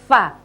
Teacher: kalau Va itu adalah bibir atas tidak bertemu dengan bibir bawah yang bertemu adalah gigi seri atas pyp perut bibir bawah sehingga